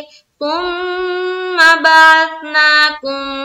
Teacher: मीम साकिन के बाद दूसरी मीम यानी कि एक और मीम आ जाए तो मीम को मीम से मिलाकर गुन्ना के साथ पढ़ा जाता है। इसको कहते हैं मीम साकिन के कायदे। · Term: इदगाम शफवी